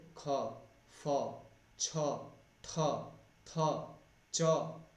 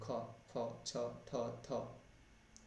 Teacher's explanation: श्वास जो है वो बाहर निकलती है, प्राण वायु जो है ना ज़्यादा मात्रा में निकलती है, इसीलिए इनको श्वास कहा जाता है।